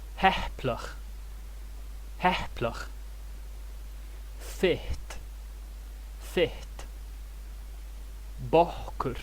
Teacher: Valhalish also has something known as pre-aspiration. When p, t and k are doubled, there's a puff of air before the consonant. It's as if one of the p's, t's or k's was turned into an h.